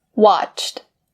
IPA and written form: wɑːtʃt (watch)